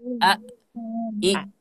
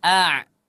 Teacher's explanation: dia syiddah tidak mengalir suaranya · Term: huruf hamzah